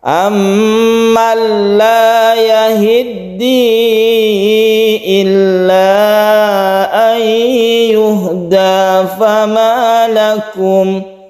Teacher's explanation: Kita idgham digunakan juga, yang ini kita panjangkan, tapi yang ini nun bertemu dengan lam ini tidak kita gunakan, tapi tetap masuk ke lam. Nun mati ini melebur menjadi lam.